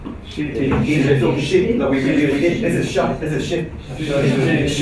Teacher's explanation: The short I is also close to shwa.